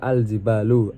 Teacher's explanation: Al-jibalu sendiri situ adalah alif lam qamariyah karena lam dibaca jelas karena bertemu dengan huruf qamariyah yaitu jim